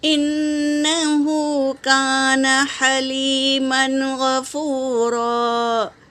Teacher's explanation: دیکھو میری بہنوں، بھول سے میں نے اخفا کر دیا۔ تنوین کے بعد غین ہے تو اظہار ہوگا نا، تو اظہار کریں گے۔